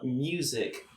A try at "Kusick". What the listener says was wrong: Kusick. It's not Steven Music. It's like music, but with a K. The M is silent.